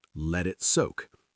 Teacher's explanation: The T in let connects to it, so it sounds like a D.